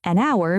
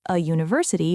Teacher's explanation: So, it's not about the letter, but about the sound. an hour because the h is silent, but a university because it starts with a u sound, not an h sound.